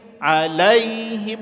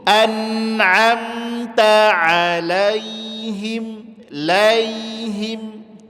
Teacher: Sifatnya lin dia lembut saja tapi bunyikan ke huruf i.